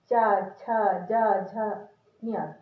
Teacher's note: जो चा वाली लाइन है तालू से बोली जाती है। ताला भी इसको कहते हैं, चा छ जा झ ञ, तालु तो समझते हैं ना, ये इसके ऊपर का भाग।